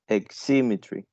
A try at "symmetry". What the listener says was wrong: you are placing the stress after the first uh symmetry so it is in the second syllable